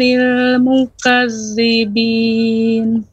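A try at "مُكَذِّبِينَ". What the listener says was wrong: Jangan mukazzibin, namun mukadzibin. Mukadzibin.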